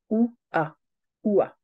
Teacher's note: alors les bases comment créer le son W c'est très facile le son wa c'est tout simplement l'association du son ou comme dans foot par exemple et du son a comme dans alphabet